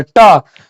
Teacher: जीभ जो है टेढ़ा होकर जाके सटेगा, तो वो कहां पे जा रहा है, आपको कहां पे स्पर्श कर रहा है, तो मूर्धा पे स्पर्श कर रहा है